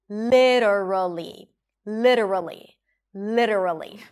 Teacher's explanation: Le, an L sound and a I sound le. And then the T becomes a flap T and then awah little.